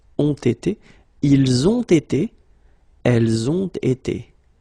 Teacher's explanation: you make the little liaison here as well, between the on and été with the t. Ont été.